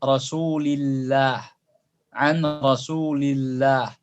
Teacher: Tapi kalau huruf sebelum lafaz jalalah adalah kasrah, misalnya, illah, ya, an rasulillah, ya, lam rasul harakatnya kasrah, bertemu dengan lafaz jalalah Allah, rasulillah, an rasulillah, lamnya tipis, lam jalalahnya tipis. Jangan antum ucapkan an rasulillah, an rasulillah, ini keliru.